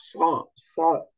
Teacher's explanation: উচ্চারণ জিহ্বার আগা, উপরের দাঁতের গোড়া। স, নিচের দাঁতের গোড়া। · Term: সদ